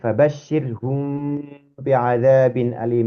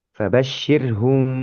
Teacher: Tempo yang ditempuh ketika mengucapkan huruf antara huruf mim dan ba ini mestinya lama, seperti lamanya gunnah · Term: mim sukun bertemu ba